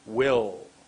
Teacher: My tongue went behind my top teeth.